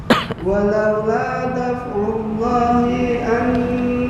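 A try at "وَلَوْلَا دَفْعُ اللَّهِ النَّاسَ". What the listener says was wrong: Daf'ullahin nasa, bukan daf'ullahi an-nasa.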